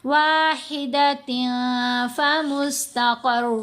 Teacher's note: فا ان حروف میں شامل ہے، تو واحدتن، تا دو زیر تن میں نون کو ظاہر نہیں ہونے دینا، ناک میں چھپائیں گے